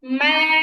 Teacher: দুই ঠোঁটের শুকনো জায়গা লাগবে মিম বলার সময়